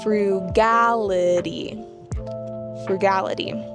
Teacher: Notice the emphasis is on the second syllable.